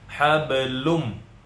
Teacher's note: Nah, setelah hablun ada tanwin, huruf lamnya bertanwin lun karena bertemu mim jadinya idgham bigunnah. Dimasukkan ke mim, tidak terbaca lagi bunyi tanwin tapi langsung ke mim. Hablum. Kemudian didengungkan 2 harakat hablum.